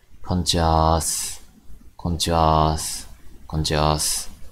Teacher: I put on the s sound at the end on some casual situations